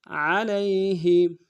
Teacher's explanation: عین کو موٹا ادا کریں گے، لام کو یا کے ساتھ ملانا ہے، یا لین ہے، بغیر کھینچے پڑیں گے، ہا کو نون سے ادا کریں گے.